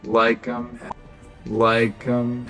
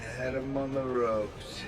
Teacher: The letter H in pronouns like him or his is usually dropped when the word is not being stressed.